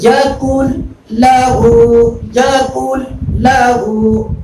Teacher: اب اس کی 2 صورتیں ہیں، ادغام مع الغنہ اور ادغام بلا غنہ. تو یہاں پر ادغام بلا غنہ ہے کیونکہ لام اور را میں ادغام بلا غنہ ہوگا، یعنی بغیر غنہ کے